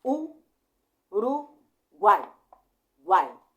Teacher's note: eu tenho uma semivogal que é o u tem uma vogal que é o a e eu tenho uma outra semivogal que é o i juntos na mesma sílaba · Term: tritongo